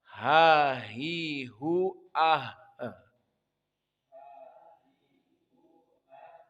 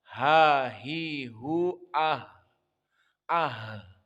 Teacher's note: Karena dia lengkap. Sifatnya adalah ha itu hams dan rokhawah. Berarti keluar nafas.